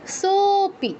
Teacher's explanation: সো হ্যাঁ, যেটা বলছিলাম লুপ্ত এর কথা, যে লুপ্ত আগে থাকলে লুপ্ত মানে যার আগে আছে, যার পরে লুপ্ত আছে সেই জিনিসটা আমাদের একটু বেশি সময় নিয়ে উচ্চারণ করতে হবে। এখানে ওকার তো এমনি দীর্ঘ, পরে লুপ্ত থাকায় সোপি আরও বেশি টেনে বলতে হবে। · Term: প্লুত